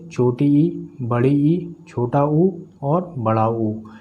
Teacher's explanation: Close. जिन स्वरों के उच्चारण में मुख द्वार लगभग बंद रहता है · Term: संवृत